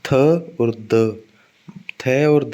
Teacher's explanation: थ और द जब बोलोगे आप तब आपकी जीभ ऊपर वाले दांत से टच होगी। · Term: डेंटल